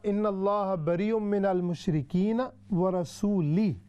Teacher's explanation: یعنی لام کے دمے کی بجائے اس نے زیر پڑھ دی. لام پر پڑھنی تھی پیش، اب اس نے پڑھی زیر.